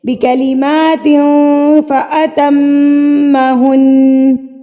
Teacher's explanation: جو غنہ ہے وہ میم مشدد اور نون مشدد پر کیا جاتا ہے